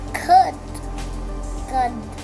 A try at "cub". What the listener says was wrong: It's a b. Cub. Cub. Cub.